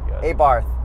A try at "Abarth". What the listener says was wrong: It's actually Abarte. The TH, it's not a real TH.